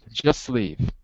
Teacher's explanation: there's no break between the S sound and the L sound. So I'm actually putting them together.